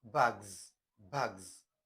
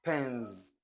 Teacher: this s will change to z, z, z when it comes after a voiced consonant or any vowel